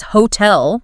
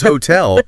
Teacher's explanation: hotel, with the stress firmly on the second syllable